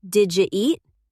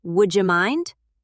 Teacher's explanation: The D and the Y are just smashing into each other and the J is the result. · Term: palatalization